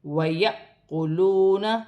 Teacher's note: الف کو حمزہ بھی پڑھا جائے گا اور جھٹکے کے ساتھ پڑھا جائے گا